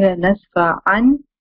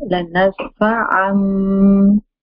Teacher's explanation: After the tanween, there is a ba. So instead of saying la nasfa an, I'm saying la nasfa am, and I'm doing the gunna as well.